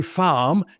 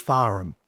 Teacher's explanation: We don't pronounce the R.